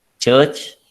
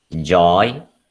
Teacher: J is voiced. So ch is the voiceless version. J is the voiced version.